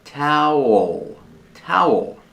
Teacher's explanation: The second syllable has a dark L with a tongue near the back of the mouth.